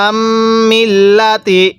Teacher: এই মিমের মধ্যে আমরা গুনাহ করব, কারণ মিমে নুনে তাসদিদ গুনাহ করা ওয়াজিব।